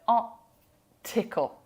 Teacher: So you still said the T, but you gave yourself like a glottal stop.